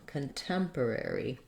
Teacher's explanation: Then with contemporary, we have 2 R sounds and a similar rhythm, slightly different, where we have rather than stressing on the first syllable like sanctuary, we have stress on the second syllable. So we have short and then long, contemporary.